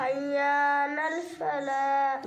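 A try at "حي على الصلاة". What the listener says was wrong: लल फला नहीं, हय्या अलस्सलाह। नून नहीं, हय्या अलस्सलाह।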